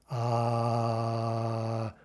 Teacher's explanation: we could hold that sound indefinitely for example ah right that's an unchanging sound one sound one sound only it's not shifting or gliding almost imperceptibly between multiple sounds